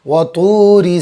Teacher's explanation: را کے نیچے زیر ہے، را باریک ہوگی